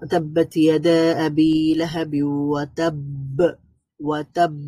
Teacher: ওয়াতাব্বা এর মধ্যে যে কলকলাটা হবে সেখানে আরো স্ট্রঙ্গার হবে, আরো বেশি শক্তিশালী কলকলা হবে